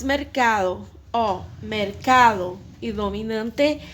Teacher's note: la sílaba tônica é a penúltima e são classificadas como llanas